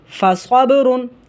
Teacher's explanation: با جو ہے یہ حروف قلقلہ میں سے ہے، اس وجہ سے یہاں قلقلہ کیا جائے گا، آواز کو پھسلا کر پڑھا جائے گا۔ اور حروف قلقلہ جب ساکن ہوتے ہیں تو انہیں خوب واضح اور ظاہر کرنا ہوتا ہے۔ · صاد حروف مستعلیہ میں سے موٹا کر کے پڑھا جائے گا، اور با جو ہے یہ حروف قلقلہ میں سے ہے، اس وجہ سے یہاں قلقلہ کیا جائے گا، آواز کو پھسلا کر پڑھا جائے گا۔